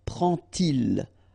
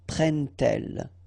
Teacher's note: And so this little D here is in red just to show you that you won't pronounce it like D to make the liaison, but you will pronounce it like T. And so you will get prend-il, okay?